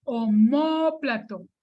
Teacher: Omóplato es una palabra esdrújula, porque la sílaba tónica es la anterior a la penúltima. Está aquí en la columna de las esdrújulas y en cualquier letra que termine esa palabra le debo poner acento.